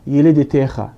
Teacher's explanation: في الحقيقة هي تنطق احتكاكية خا، وإنما هو الحرف كا، لكن الكا عندما تقع في آخر الكلمة تتحول إلى خائن.